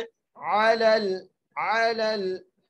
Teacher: और आगे अलल, आइन के ऊपर ज़बर है, लाम को लाम से मिलाते हुए पढ़ना है